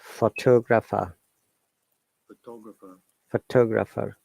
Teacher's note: Okay, 3 syllables photograph, but we're stressing on pho and photographer. So 4 syllables, but we're stressing on 2. Then photographic, 4 syllables, but stressing on third sound.